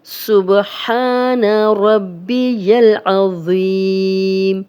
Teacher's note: ज़ौ मोटा भी है और नरम भी है, सीटी की आवाज़ नहीं आएगी और आइन की भी क्लियर आवाज़ आनी चाहिए।